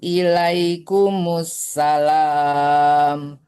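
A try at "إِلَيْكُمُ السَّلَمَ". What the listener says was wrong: Kenapa dipanjangkan lamnya? Nggak ada panjang. Tak ada panjang.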